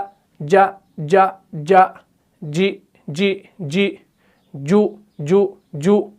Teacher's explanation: जब भी हम जीम को पढ़ते हैं तो जुबान का बीच वाला हिस्सा ऊपर के तालु से लग जाता है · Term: जीम का मखरज